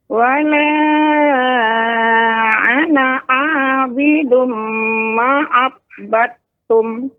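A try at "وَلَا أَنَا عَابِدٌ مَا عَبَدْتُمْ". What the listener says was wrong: manya di sini panjangnya 2 harakat Nek. Ma'abattum.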